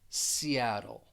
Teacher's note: the flap T, it's very distinct in an American pronunciation, and it really just sounds like a soft D, Seattle. And the reason that we use the flap T is because it comes before a dark L, Seattle. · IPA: / siˈæd l /, siˈæd l